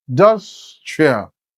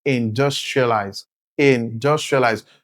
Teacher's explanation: the syllable dus is pronounced louder and clearer, which means the syllable dus is the stressed syllable